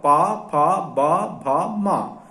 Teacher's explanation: इतने जो अक्षर हैं ये ओष्ठ से बोले जाते हैं, ओठ से।